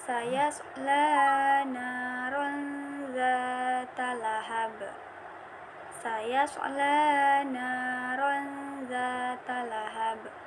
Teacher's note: Tanwin bertemu dengan huruf zal, maka dibaca ikhfa secara samar-samar.